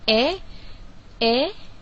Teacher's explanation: lidah dinaikkan separuh rendah ke arah gusi dan langit-langit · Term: vokal depan separuh luas